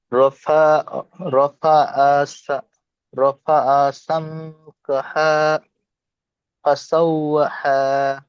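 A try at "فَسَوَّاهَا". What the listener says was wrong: এটা বড় হা নয়, এটা ছোট হা, গম্ভীর আওয়াজে হবে দুটো সব। রফা সামকাহা ফাসাওয়াহা। হা হয়ে যাচ্ছে, হা নয়, হা। হা মোটা আওয়াজে, গম্ভীর আওয়াজে হবে। হা হয়ে যাচ্ছে আবার, ওটা বড় হা হয়ে যাচ্ছে, এটা ছোট হা আছে, গম্ভীর আওয়াজ হবে। সামকা হা, হা, হা। একটু মোটা গলায় হবে, বুঝতে পারছেন? মোটা আওয়াজে।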